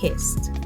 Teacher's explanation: If the sound is voiceless, like in kissed, the ED that is added in kissed will make a T sound.